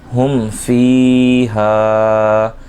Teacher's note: میم ساکن میں اظہار شفوی ہو رہا ہے، غنہ نہیں کریں گے